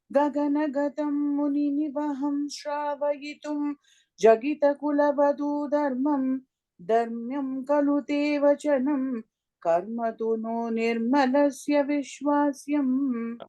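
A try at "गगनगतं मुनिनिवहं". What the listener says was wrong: Sorry, in the first line, Muni Nivaham, kapram, there is a pause. Okay, that's where the comma is.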